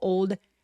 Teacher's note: 대신에 올드 man는 안 돼요. 올드 아니고 old 하면서 가볍게 D 소리만내는 거예요.